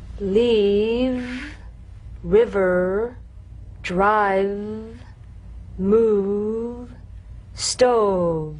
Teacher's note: Feel the teeth planted right in the lower lip, and you set the lower lip vibrating. That's what makes the sound. You'll feel a gentle, dark, buzzing vibration on the lower lip. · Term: voiced fricative labiodental